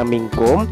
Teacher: Sebagai contoh bacaan, minkum tidak boleh dibaca minkum, tetapi harus dibaca minkum sebab suara nun sukun bersambung dengan kaf serta mendengung